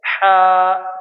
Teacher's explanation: हल्क के दरमियान हिस्सा से हा